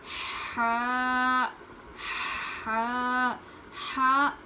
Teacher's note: حلق کے نچلے حصے سے پڑھتے ہیں. حلق کے جو اندر سے آواز نکلنی چاہیے. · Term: بڑی ہا